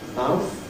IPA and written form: maʊθ (mouth)